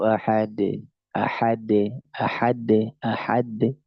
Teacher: dia tertahan sedikit baru dilepas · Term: Qalqalah